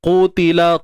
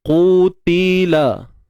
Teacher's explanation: BL bacaan lin. Qutila, qaf tebal, angkat pangkal lidah